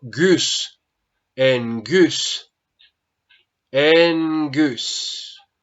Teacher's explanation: cuando gamma precede otra gutural, yo ya no la pronuncio como una gamma, sino como una especie de N. Entonces digo en. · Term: gamma nasal